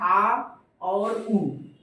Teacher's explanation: पश्च यानी पीछे का भाग ऊपर की ओर उठता है